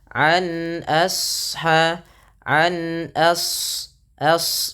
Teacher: ketika melafalkan asha a-nya [mendengus] tipis shadnya tebal. An asha an as as bukan as tapi as as ya.